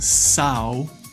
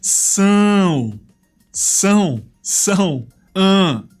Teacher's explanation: The first thing that people notice is the weird squiggly line over the top of the A in São. This just makes it nasal. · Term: Nasalized